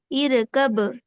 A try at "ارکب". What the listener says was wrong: ار پہ آپ کا قلقلہ ہو رہا ہے.